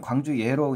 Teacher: 광주에 할 때는 광주 예로 이제 이 반모음이 첨가되거든요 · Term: 반모음 첨가